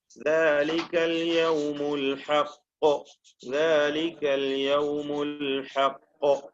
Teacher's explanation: അൽ ഹഖ് ഖൽഖലയുടെ ഏറ്റവും പ്രകടമായ ശബ്ദായ അവസ്ഥ.